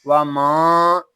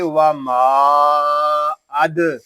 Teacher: حمزہ دال زبر اد و ما اد، اس کو و ما ایسے نہیں پڑھیں گے، ناک میں آواز نہیں جانی چاہیے، اس کو پڑھیں گے و ما اد.